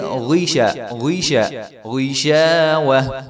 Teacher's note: غین کو ہم نے غین پڑھنا ہے، گین نہیں پڑھنا، تو اس کو گی شاوہ لمبا بھی نہیں کریں گے اور گین بھی نہیں پڑھیں گے بلکہ غیشہ، غیشہ، غیشاوہ، تو غشاوہ بھی نہیں کریں گے۔